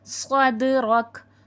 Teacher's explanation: صاد حرف مستعلیہ ہے، موٹا کر کے پڑھا جائے گا